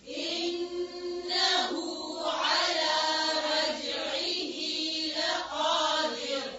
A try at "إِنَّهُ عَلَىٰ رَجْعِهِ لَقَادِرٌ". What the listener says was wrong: را کو موٹا نہیں کریں آخر میں. لقادر. در. در نہیں ہے در.